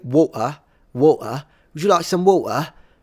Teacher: if I remove the T and use a glottal stop usually in English that makes my English sound less sophisticated